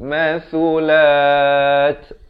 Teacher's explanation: Hujung lidah itu keluar di antara dua gigi. Mathulat. Dan diwakafkan sekurang-kurang dua harakat di sini dan diberikan bunyi hamasnya, bunyi angin itu.